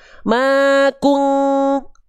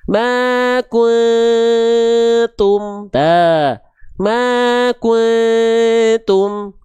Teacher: Dengungan yang tidak mendekati eng alias dengungan yang tidak kuat, dengungan yang lemah.